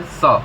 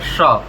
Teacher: तालव्य स, श ये इसमें, और स दंत स है ना जी। तो जो दंत स होता है वो दांत से बोली जाती है, दांत के सहारे स, और जो तालव्य स होता है उसको बोलते हैं श, थोड़ा लय में लेकर श, यानी वो तालु और जिह्वा को मिला के होता है उसका उच्चारण